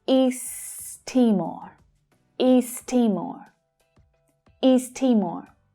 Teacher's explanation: We can push those words together and we only pronounce the sound once. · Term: linking